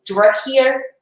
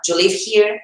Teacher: O do com you vai virar j.